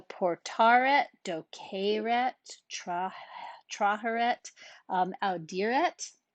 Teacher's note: normally we're gonna lengthen that final E, but remember final T and NT shorten it. So you're not gonna see the lengthening here, okay?